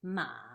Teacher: the third tone is a down up sound